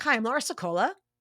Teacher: asking the whole thing as if it were a question with that rising intonation, like I mentioned before with upspeak.